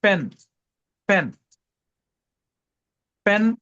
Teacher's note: बोलने के लिए हमें दो होठों को चिपक के बोलना पड़ता।